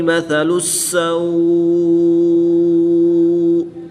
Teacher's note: سا کو سمپل پڑھیں گے، نرمی سے پڑھیں گے، اور سین پر سیٹی کی طرح آواز نکالیں گے